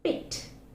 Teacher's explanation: the lips are loosely spread and the air is released without any restriction